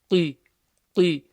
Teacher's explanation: So the qaf, clear, full mouth letter with a kasra.